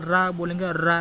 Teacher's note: देखिए जो रा होता है, जब आप रा बोलेंगे रा तो जीभ लुढ़क जाती है, इसीलिए कहेंगे इसको लुंठित व्यंजन।